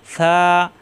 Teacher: জিব্বার আগা উঠে দাঁতের আগায় লাগিয়ে নরম করে